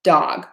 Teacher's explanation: true D sound dog my tongue is touching that Ridge between my teeth and the top of my of my mouth